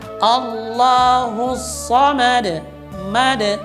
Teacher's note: Harusnya ma dengan vokal A, tidak boleh dengan me. Maka yang benar adalah Allahus samad.